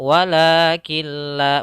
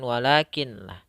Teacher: nun menghilang dan langsung masuk ke lam bersama dengan shadda. · nunnya hilang, langsung masuk kepada huruf lam yang berharokat tasydid. Sehingga kita bacanya walakilla, bukan walakinlah, tapi langsung masuk ke lam. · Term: idgham bila ghunna, idgham bila gunnah